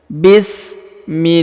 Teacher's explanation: ini harakat I sebelum huruf lafzul jalalah ya atau lafaz Allah maka lahnya dibaca tipis Bismillahi ya huruf la dipanjangkan dua harakat pada lafaz jalalah karena